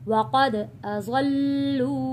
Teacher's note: क़ाफ मोटा पढ़ेंगे, दाल पे कलकला करेंगे